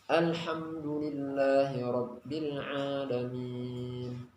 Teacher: Dia sifat lam adalah tawassut, yaitu di antara syiddah dan rakhawah, tetapi tidak qalqalah.